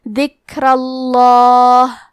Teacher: تو ہمیں حرف اللام کو موٹی آواز میں پڑھنا ہے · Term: تفخیم